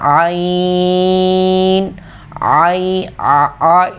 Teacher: عین اس کو گلے کے آخری حصے سے نکالتے ہیں، ذرا سا اس کو نکالنے میں بھی تھوڑی سی مشکل ہوتی ہے.